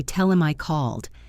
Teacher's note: In clear speech, we pronounce the H in words like him and her and he, but in fast fluent speech, we often drop the H, especially if the pronoun is not stressed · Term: H dropping